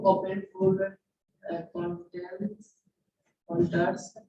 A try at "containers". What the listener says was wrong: फिर से देखिए, open food contain ER छोड़ दिए,